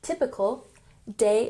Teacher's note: emphasize the first syllable, typical